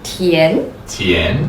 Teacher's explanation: From your midpoint, go all the way up until you feel like that's the top.